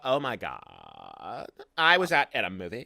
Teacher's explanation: And then you get vocal fry at the end.